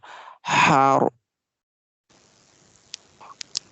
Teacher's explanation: Ha will be from the middle part of the throat.